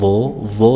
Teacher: Doo diucapkan dari ujung lidah menempel dengan ujung-ujung gigi seri atas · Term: huruf tebal